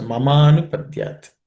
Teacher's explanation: Ma plus a becomes ma, longer ma.